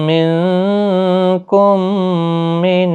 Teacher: میم ساکن کے بعد دوسرا میم آیا ہے میم مشدد، تو یہاں پر ادغام شفوی ہوگا، گنہ کے ساتھ پڑھیں گے